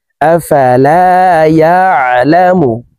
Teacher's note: আইনকে হালকের মধ্যখান থেকে উচ্চারণ করব